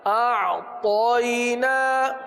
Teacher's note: تو پڑھیں گے، عین کو نرم کریں گے، حمزہ سخت کریں گے، زور سے، اِنَّا أَعْطَيْنَا تو کو پر پڑھیں گے